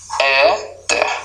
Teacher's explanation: Éter, a sílaba na penúltima é pronunciada de maneira mais tônica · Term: paroxítona